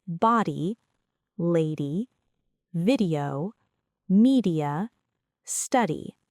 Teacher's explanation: This is a quick, light tongue tap. The tongue briefly touches the upper palate and moves away immediately, and it is the same sound as the flap T in American English. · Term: flap D, flap sound